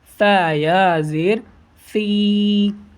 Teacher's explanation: جو نیچے سین ہے اس میں سیٹی کی آواز آتی ہے · زبان کے نوک کو آگے والے جو سامنے کے دانت ہیں اس میں لگا کر پڑھتے ہیں